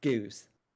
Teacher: there's a lot of diphthongization of u of the goose vowel